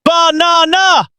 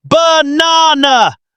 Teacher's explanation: The first and last A become schwas. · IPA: /ə/